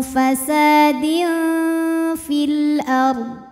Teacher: huruf ro sukun dibunyikan secara tafkhim karena sebelumnya ada fathah maka rnya tebal